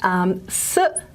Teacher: And hopefully, if you've held that tongue position and breathed in, you should feel that there's a very narrow groove along the tongue, really narrow. And you should feel cool air along that narrow groove. And you should also feel cool air at that alveolar ridge, okay? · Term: alveolar sound